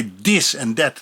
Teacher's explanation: that is hard for them so they say this and that the th becomes a D